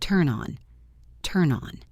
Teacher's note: The N in turn connects to the O in on.